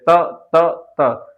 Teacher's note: त तो एक बार त बोल के देखिए मेरे साथ, बोलेंगे तो आगे का भाग जो है जीभ का आगे वाला हिस्सा हमारे आगे वाले दांतों से लगता है, जैसे त त त।